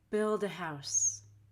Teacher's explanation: Notice I said duh with a really light D.